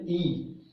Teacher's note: यानी कि जीभ का जो फर्स्ट भाग होता है वहां से बनेगी ई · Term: अग्रभाग